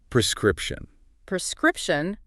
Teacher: Notice how the stress is on the second syllable.